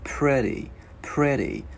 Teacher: Chữ T này sẽ biến thành chữ D tiếng Việt nhẹ